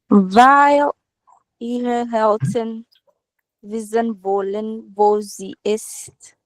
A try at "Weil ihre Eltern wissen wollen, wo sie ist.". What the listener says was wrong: Super, super.